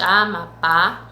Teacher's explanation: o par e a mais forte então uma palavra oxítona certo oxítona quando a última sílaba tá mais forte